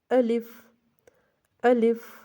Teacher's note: آہا کو لمبا نہیں کرنا، آلف نہیں پڑھنا، لی کو بھی لمبا نہیں کرنا